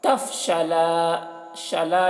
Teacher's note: یہاں پر الف مدہ ہے، 1 الف کے برابر کھینچ کر پڑھیں گے